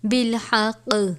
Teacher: اس صورت میں کاف ساکن ہو جائے گا بالحق کلکلا بھی کرنا ہے